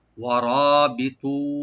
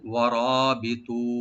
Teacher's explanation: ওয়ারাবিতু, ওয়া ওপেন রাখবেন, রটাকে মোটা করে ডিপ করে এক আলিফ টানবেন, ওয়ারা। বি বলবো, তটাকে একটু ডিপ করে এক আলিফ টানবো